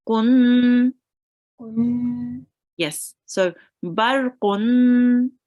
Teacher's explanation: So what we do with dammatain is you read the first dhamma, and then you make a nasal sound for the second dhamma